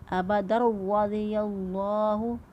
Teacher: سے را آ گیا، تو یہاں پر ادغام بلا گنہ ہوگا، گنہ نہیں کریں گے، صرف ادغام کرتے ہوئے ادا کریں گے